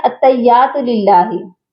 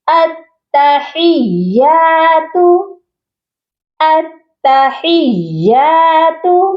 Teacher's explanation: تا مشدد ہے اور اس کے ساتھ ہا ہے، یہ پڑھا جائے گا التحیات۔ ہا کو یا مشدد کے ساتھ سختی سے ملانا ہے اور تا پر بھی ہم نے سختی کرنی ہے